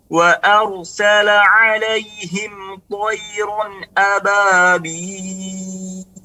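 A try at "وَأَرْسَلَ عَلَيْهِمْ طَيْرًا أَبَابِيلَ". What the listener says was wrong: Perhatikan huruf ba. Huruf ba adalah sifatnya istifal, bukan ababil tapi ababil. Ba.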